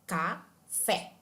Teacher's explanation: A sílaba fé é a mais forte e, portanto, é a sílaba tônica. Já a sílaba K é a sílaba mais suave e, portanto, é a sílaba átona.